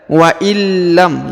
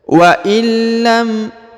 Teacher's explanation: atau nun sukun menjadi hilang ya maka kita lihat waillam ya karena huruf i langsung ke huruf lam yang berharakat tasdid Adapun huruf nunnya tidak dibaca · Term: nunnya menjadi hilang